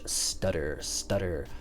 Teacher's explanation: that r will sound like a hard d in english